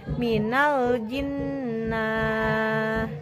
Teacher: Jadi durasi pelafalan nun sukun 2 harkat, gunah jelas. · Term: idgham kamil